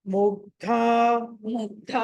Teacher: ముగ్ధ అక్కడ ధ మహాప్రాణము కాబట్టి ఒత్తి పలకాలి.